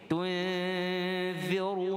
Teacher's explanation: iaitu hukum ra dibaca tafkhim, dibaca tebal